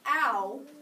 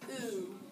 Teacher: our mouths move when we say the two sounds of the diphthong OU, ow, but they don't move at all during the sound digraph OU makes, ooh